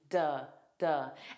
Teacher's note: those T's are going to be dropped to D's. So, we use a flap T.